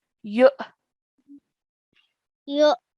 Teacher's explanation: we're joining the ya to the hamza sakin, and when we do so, we have to make a soft jerk sound